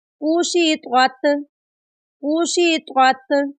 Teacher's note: یہاں پر پہلا طوا ہے، اس کو موٹا پڑھیں گے، اور نیکسٹ جو ہے وہ تا ہے، اس کو باریک پڑھیں گے۔